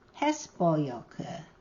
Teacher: just like Konkow, the stress is on the first syllable, hes